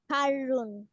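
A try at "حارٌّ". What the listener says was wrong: হারুন, হাতে টান হবে, একালিফ টান হবে, হারুন।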